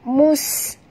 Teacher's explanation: bila dia mati, kita kena jelaskan bunyi safirnya. Apa itu safir? Iaitu angin yang berdesir